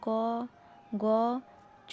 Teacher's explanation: উচ্চারণের সময় শ্বাসবায়ু অপেক্ষাকৃত কম নির্গত হয় বলে এদের অল্পপ্রাণ বর্ণ বলে যেমন ক গ চ বর্গীচ্য খ এ মহাপ্রাণ ব্যঞ্জন ধ্বনি হলো